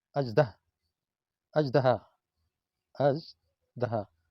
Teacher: ی اس طرح ر لکھ کر اس کے اوپر 3 نقطے، اور اس کی آواز جہاں سے یہ ادا ہوتی ہے چھوٹی یہ، اس سے ذرا پہلے زبان تعلق سے لگے یہ، زناٹا تھوڑا سا پیدا ہوتا ہے